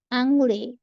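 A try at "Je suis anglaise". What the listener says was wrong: আংলে না, এটা আইন অ হবে, হ্যাঁ, তাহলে অংলেজ, Je suis জংলেজ, হ্যাঁ এখানে লিয়াজও আছে। Je suis জংলেজ, দেন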